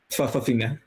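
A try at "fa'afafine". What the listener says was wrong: The the comma is pronounced a lot of people get that wrong.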